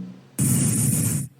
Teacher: So the bleed of the tongue is touching the upper teeth not the alveolar ridge. The upper teeth. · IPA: /θ/